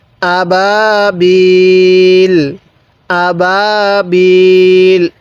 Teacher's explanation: এই হামজা মধ্যে টান দিব না বা এর মধ্যে টান দিব